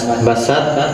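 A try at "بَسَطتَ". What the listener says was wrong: Apakah begitu? To-nya mana?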